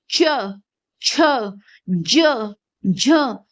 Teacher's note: जब हमने क बोला, क ख, तो कुछ हुआ, लेकिन च छ तो कुछ नहीं हो रहा। च, जीभ ऊपर टच हो रही है, तो इसलिए कैसे वर्ण है, तालव्य वर्ण है